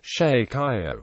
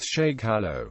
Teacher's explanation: The sounds represented by l and y have fused into one. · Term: yerismo